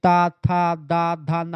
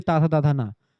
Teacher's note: आपकी जीभ दांतों पर ऊपर वाले जाकर के टच होती है। जब आप ता के पूरे वर्णों को बोलते हैं। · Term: दंत ध्वनि